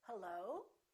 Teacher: i can make the rising intonation and when i answer the phone i can say hello so the pitch goes up